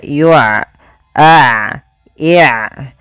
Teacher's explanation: Pada lafal bacaan yu'rafu, di sini ain memiliki sifat yaitu sifat bainiyah, yaitu suaranya tidak terlalu dialirkan dan tidak pula terlalu ditahan